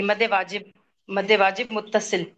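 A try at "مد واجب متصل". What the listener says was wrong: मद मुत्तसिल वाजिब, मदे मदे नहीं करना। मदे, दे की आवाज तो इस तरह की नहीं है, ये मजबूर साउंड थोड़ी होती है।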